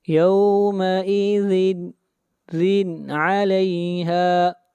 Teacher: تنوین کو ظاہر کر کے پڑھیں گے، تنوین کے بعد حروف حلقی میں سے عین ہے